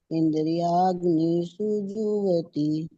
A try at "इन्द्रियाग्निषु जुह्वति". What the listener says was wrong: ये आप भी इंद्रियाग्निषु बोलते हैं, नी पे ठहरना नहीं है। इंद्रियाग्निषु जुह्वति, ये नी बड़ी मात्रा नहीं है, ये छोटी है।